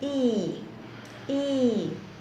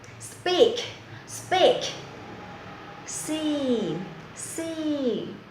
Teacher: E is a long vowel sound. Make the mouth wide like a smile. The tongue touches the side of the word.